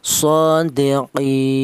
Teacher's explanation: qasar atau artinya pendek yaitu satu alif atau dua harakat atau dua ketukan